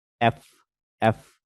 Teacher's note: যখন আমরা দাঁত থেকে এফটা উচ্চারণ করি তখন কিন্তু বাতাসটা আস্তে বের হয়। আর যখন দুইটা ঠোর থেকে বাতাসটা বের করি তখন কিন্তু স্ট্রং একটা উইন্ড বের হয়।